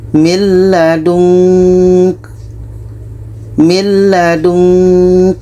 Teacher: Ketika kita baca nun, kita sudah merasakan huruf ka. Maka seperti ada bunyi eng.